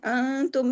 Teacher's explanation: انتم میں اخفا حقیقی غنہ کاملہ کیونکہ نون ساکن کے بعد تا ہے